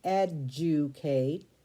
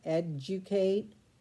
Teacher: Now this word is tricky because when you say it, educate, you kind of put a J sound in there